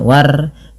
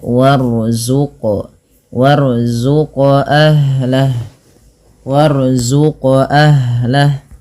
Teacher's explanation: ro-nya dibaca dengan tebal ya, jangan dibaca dengan tipis, jangan war, tapi dia warzuq, warzuq ahlah, warzuq ahlah.